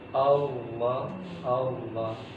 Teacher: Tidak melafalkan Allah dengan menggerakkan bibir, karena kita tahu lam itu bukan huruf bibir, tapi huruf lisan